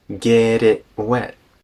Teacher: the T in get turns into a tap and the T in it turns into a global stop get